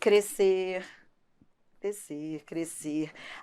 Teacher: o SC contam como um som só de S. Então, não é para falar descer, não é para falar crescer.